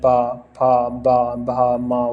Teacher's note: दोनों होठों की सहायता से उच्चारित होने के कारण प वर्ग के वर्ण ओष्ठ ही कहलाते हैं। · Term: होष्ठी